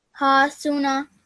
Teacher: your sin and your noon are 1 second long, and your ha is 2 seconds